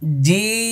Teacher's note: এখানে এটা ছয় নম্বর মাখরাজ আর চার আলিফ পরিমাণ টান হবে জিম শেষে দেখেন ঠোঁট বন্ধ হবে কারণ এটার শেষে মিম আছে